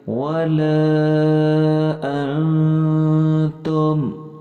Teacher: اخفا کا مطلب ہوتا ہے نہ تو یہ بالکل غنہ کرنا ہے، نہ اسے واضح کر کے پڑھنا ہے، بلکہ غنہ اور اظہار کے بیچ میں اخفا کرنا ہے، یعنی آواز کو ناک اور منہ کے بیچ میں رکھ کر سائیڈ سے ادا کرنا ہے